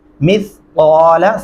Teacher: مثقال، سا کو نرمی سے ادا کریں گے، لام کو لمبا نہیں کریں گے